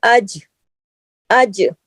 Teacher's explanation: जीम जज़म के साथ है, जीम पे कलकला भी होगा।